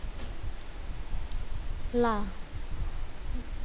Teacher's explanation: Lidahnya menempel pada gusi dari gigi bagian atas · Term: huruf lam